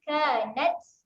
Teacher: Okay, seterusnya huruf ta. Ta ada keluar angin ketika mati. Kanat, keluarkan angin sedikit.